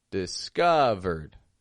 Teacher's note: And the O in the middle got all the stress.